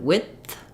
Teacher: If I'm saying width, my tongue stops the air for the D, so you can hear that the I sound is fairly short, and then it releases into the th sound.